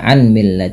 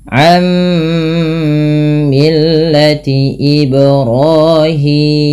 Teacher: yaruillati sama ketika kita membaca ammillati tidak lagi dibaca anmill tapi langsung ke mim dan ditahan suara mimnya karena ia bacaan Idam bunah am millati ibrahima Kemudian pada lafal